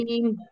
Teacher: আইনটা গলাটা চেপে পড়তে হবে। নাস্তাঈন।